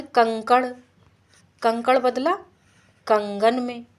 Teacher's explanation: का तो खर में आता है, का बदल गया गा में, यानी सघोषीकरण हो गया।